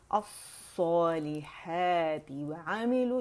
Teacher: ये दो लफ्ज़ों वाला इज्तिमा साकिनैन भी हो रहा है, वाव ड्रॉप हो जाएगा। जो हरूफ मद्दा इज्तिमा साकिनैन के उसमें ड्रॉप हो जाते जब हम पढ़ते हैं रवानी में, ठीक है।